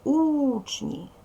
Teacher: обов'язково один склад буде наголошений другий не наголошуємо вимовляємо слово учні наголос падає на перший склад